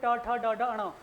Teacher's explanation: मूर्धन्य देखे जिनको उच्चारण में जीभ हमारी मुड़ती है